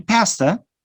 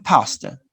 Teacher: it's an open vowel, it's a front vowel, but in the second one, we use the central or back vowel.